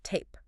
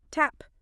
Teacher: You are gliding the sound. Your jaw actually closes slightly as you finish the vowel.